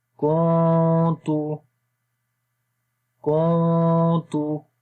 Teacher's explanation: نون کی آواز کو ہائڈ کریں گے، اخفا ہو رہا ہے